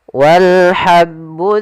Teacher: alif lam qamariah yaitu alif lam yang ditulis dan dibaca yaitu kita baca Wal dengan jelas karena ha termasuk huruf qamariah